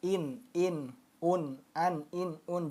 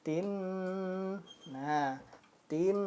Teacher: jelas pendek apa tidak ditahan ataupun tidak dengung Nah jadi dia pendek satu ketukan saja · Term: jelas dan pendek